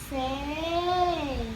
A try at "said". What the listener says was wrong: Okay, said, not say, okay? It's different from say, okay? Okay, not say, okay? So, though they are similar, but this one is in the past tense, okay?